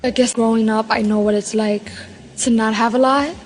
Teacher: New York Latino English speakers have a particularly light L.